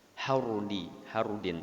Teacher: Sebelumnya dulu itu ada hukum ro tafhim atau ro tebal ya, ro tafhim di mana har ya, karena ro mati atau ro sukun huruf sebelumnya berbaris fathah atau dhammah, itu menjadi ro-nya ro tebal atau ro tafhim.